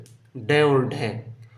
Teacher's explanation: उत्क्षिप्त मतलब झटके से जिव्या लगना जब यह बोलते हैं तो जिव्या जो है झट से वहां लगती है